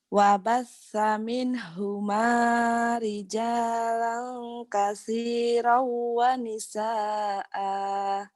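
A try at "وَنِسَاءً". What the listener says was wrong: Jangan ada ahnya itu sedikit. Ada hanya dikit.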